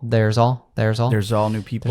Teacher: Or there's like there's all that there's ends with a Z sound, a Z sound, right? And it connects to all.